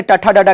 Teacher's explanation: ट कहते हैं तो हमारी जीभ जो है आपके मूर्धा में जाकर लगती है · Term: मूर्धन्य